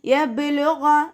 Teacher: ബ കൊൽക്കല ലെറ്റർ ആയതുകൊണ്ട് ഫുൾ സുക്കൂന് കൊടുക്കുക. യബ്ലുഗ ഗൈന് ഇസ്തിഅലാൻ്റെ ലെറ്ററാണ്, ഉയർത്തിയിട്ട് ഉച്ചരിക്കുക കേട്ടോ. ഗ എന്നുള്ള സൗണ്ട് കൊടുക്കുക.